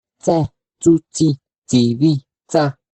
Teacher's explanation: La consonante africada alveolar sorda.